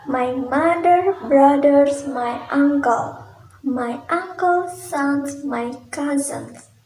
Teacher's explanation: A is a short vowel sound pronounced with the jaw made to open, the tongue central or slightly back, and the lips are relaxed.